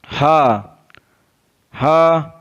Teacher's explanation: हा हल्क के नीचे वाले हिस्से से अदा होता है। हा is pronounced from the bottom part of the throat.